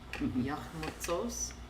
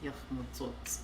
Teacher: other ones they don't, but in this verb paradigm, the only difference between the telic and the negation for refusal is s versus ts